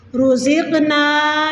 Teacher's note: قاف کے اوپر ساکن آ جائے تو قلقلہ کر دیا جاتا ہے تو ہماری آواز ٹکرا کے واپس آتی ہے